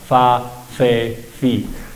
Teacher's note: en español la f es un sonido labiodental con los dientes de arriba tocamos los labios de abajo